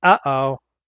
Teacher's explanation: Glottal stops are dropped sounds, air breaks between sounds, like when Teletubbies say, uh-oh.